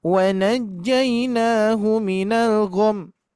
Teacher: Nah, jadi tanpa didengung, cuman gom saja.